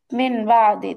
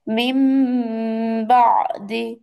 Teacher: নুনের জায়গায় মিম দিয়ে গুণনা করে পড়তে হবে